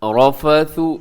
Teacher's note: لیلۃ الصیام الرفث، اس میں جو ہے رفث اس میں کیا ہے کہ را موٹا پڑھا جائے گا، را کو اپنے باریک نہیں ہونے دینا